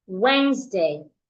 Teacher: The S in Wednesday makes a Z sound.